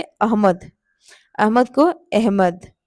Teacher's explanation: जो ह से पूर्व आने वाला वर्ण था उस जो अ था उसको ए की तरह हम लोग उच्चारण करने लगे